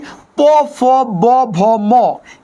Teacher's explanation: এই যে যেই প, ফ, ব, ভ, ম, এগুলা উষ্ঠ বা ঠোঁট দিয়ে উচ্চারিত হয় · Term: উষ্ঠধ্বনি